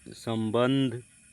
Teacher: संबंध में पहला अनुस्वार ब प वर्ग के से पहले है इसलिए म बना है और दूसरा अनुस्वार ध त वर्ग से पहले है इसलिए न बना है